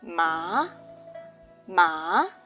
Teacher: the second tone it's a rising tone some people feel like you are asking a question